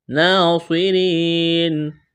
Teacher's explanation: نون مشدد پر غنہ کریں گے، کڑا زبر ہے، الف کے برابر کھینچنا ہے۔